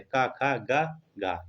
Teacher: पहला जो होता है का वर्ग का, वो कंठ से बोले जाते हैं।